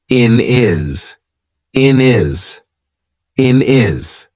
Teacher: we've taken away that H completely and we've made it into one word